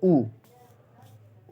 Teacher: उच्चारण ऊ का करने पे दोस्तों ओठ गोल हो जाते हैं, उसे ओष्ठ वर्ण कहते हैं।